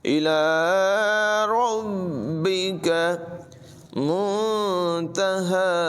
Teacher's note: فیم انت من ذکراہا الی ربک منتہاہا، الی ربک، لام پر کھڑی حرکت سے لمبا کریں گے، را کو پر ادا کریں گے، اور با میں جماؤ کے ساتھ ادائیگی ہوگی، کاف کی آواز بریک ہوگی